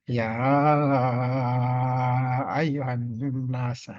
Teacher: berubah menjadi lima atau enam harakat kemudian ada Annas ya ayyuhanunas Nun bertasdid ini didengungkan ditahan bacaannya disebut gunna · Nun bertasdid ini didengungkan, ditahan bacaannya, disebut gunnah musyaddadah. Jadi dengung, ada tasdid.